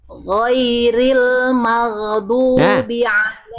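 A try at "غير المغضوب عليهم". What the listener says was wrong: Mau ini agak mantul sedikit. Bunda udah mengalir tadi huruf goinnya, tapi masih ada maro. Ghairil maghdubi. Ghairil maghdubi. Ghairil dialirkan, jadi ainnya ditekan, ghair ditekan, lempar aja, jangan ditarik lagi. Kalau ditarik lagi maro. Ghairil maghdubi. Jadi dilempar, seorang lagi dilempar keluar.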